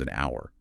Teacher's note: Conversely, the word hour starts with a consonant letter H, but the H is entirely silent, making the first audible sound a vowel O. So, it becomes an hour.